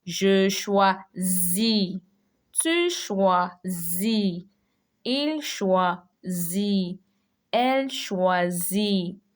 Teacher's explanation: the first S is between two vowels and it's only one S, so it has a Z sound.